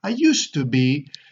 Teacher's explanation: to tease I used to but you do it very quickly the first T you don't do clearly but the second T has to be clearer